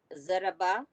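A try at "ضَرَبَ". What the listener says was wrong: ये सारे लोगों को कुछ एक अजीब शिकायत है, ये बेजबर बा होता, खाली बा नहीं होता, जरा भी नहीं खींचना है। ज़रबा, ज़रबा।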